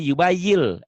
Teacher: Karena dia di hadapannya bunyi L, jadi yubayil, N-nya hilang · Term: idgham